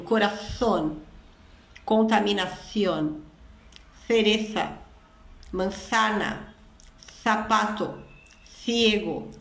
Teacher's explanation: Você coloca a língua no meio dos dentes e assopra. Essa é a pronúncia que predomina na Espanha.